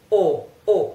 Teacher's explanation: this o is a closed oh oh oh it's not the open oh